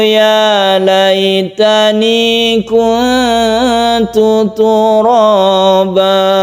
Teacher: turaba ini mad iwad satu alif saja